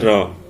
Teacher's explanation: जीभ का अग्रभाग मसूड़े के पास 2-3 बार हिलने से लुंठित ध्वनियों की उच्चारित होती हैं। जैसे र, लुंठित ध्वनि उदाहरण हो पिला माने र।